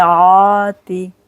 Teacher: کھڑا جبر ہے 2 سیکنڈ کے لیے کھینچیں گے